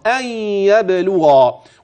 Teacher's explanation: وتخلي بالك من الترقيق في اللام والتفخيم في الغين